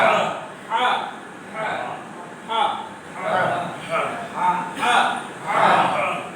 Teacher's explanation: এই হা হরফটি উচ্চারিত হবে কণ্ঠনালীর মাঝখান থেকে